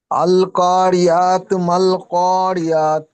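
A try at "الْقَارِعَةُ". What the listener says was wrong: আইন উচ্চারণ হচ্ছে না। আল কারিআতু, আ আইন জবর আ গলার মধ্যে দিয়ে। আইনের মাখরাজ বলা হয়েছে হলক গলার মাঝখান দিয়ে, মানে হলকের মাঝখান দিয়ে উচ্চারিত হয়। আল কারিআতু, আতু আইন পুরো গলার মধ্যে মাঝখান দিয়ে।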